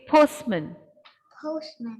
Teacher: The schwa sound. The schwa is here with A, but the t is completely dropped and we say postman.